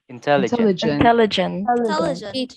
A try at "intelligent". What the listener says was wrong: You notice the I? You notice the I, it's not pronounced as E, important, intelligent. It's like you're stopping Intelligent.